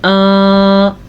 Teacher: حمزہ کے اوپر کھڑی زبر ہے تو کھڑی زبر کو ہم کھینچ کے پڑھیں گے